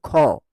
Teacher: যেমন এই যে খ, দেখো খ উচ্চারণ করার সময় একটা হ উচ্চারণ হচ্ছে শেষে আসছে। দেখো ক যুক্ত হ সমান খ, ক, ঘ, চ, দেখো হ আসছে। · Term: মহাপ্রাণ